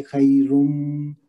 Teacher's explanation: خی میں یائے لین ہے، نون کا تنوین آ رہا ہے، آگے میم کا ادغام ہوگا اس کے ساتھ، تو یہ غنہ کے ساتھ پڑھیں گے خیرم۔